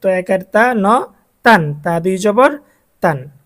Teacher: যখন আরেকটি জবর দিয়ে দিলাম, দুই জবর হয়ে গেছে। তানভিনের উচ্চারণ হবে এখন নুন সাকিনের মতো, বাংলায় নয়ের মতো।